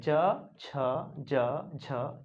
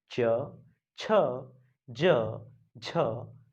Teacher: ज या तो जीव जो है तालु को स्पर्श करती है जीव मुख में तालु को स्पर्श करती है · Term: तलव्य